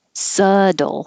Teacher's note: this word there's no B sound there's no T sound